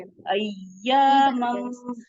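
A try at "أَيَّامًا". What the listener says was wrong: देखिए यहाँ पे आपने या पढ़ी है, या के ऊपर क्या करना था? क्या क्या करते हैं या के ऊपर शद आ जाए तो?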